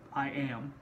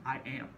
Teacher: When you overemphasize it, I am, right? The I gets less stress, the am gets more stress. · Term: iamb